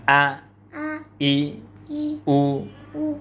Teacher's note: হামজা যেন হলকের শুরু হতে শক্তভাবে আদায় হয়